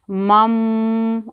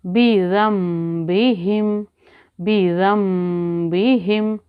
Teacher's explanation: نون ساکن کے بعد حرف با آ جائے تو ہم اس کو پڑھیں گے میم